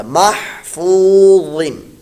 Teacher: ذال اور زا دونوں کی آواز یہاں پیدا نہ ہو، پر موٹا اس کو ادا کیجیے گا